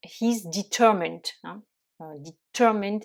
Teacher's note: On va accentuer sur la deuxième syllabe.